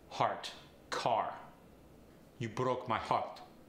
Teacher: for AR words keep it simple just add that tapped R · For the Farsi accent, we get the R tap rather than the full R roll.